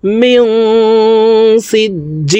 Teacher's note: নুন সাকিনের পরে ইকফার হরফ সিন আসছে, এই কারণে এই নুন সাকিনকে নাকের ভিতরে লুকাইয়া গুন্নার সহিত পড়ব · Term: ইকফা গুন্না